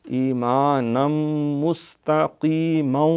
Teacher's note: ادغام ہے تنوین کا میم کے اندر ، نم نم 2 پیشیں نہیں پڑھنا، نیم زیریں بھی نہیں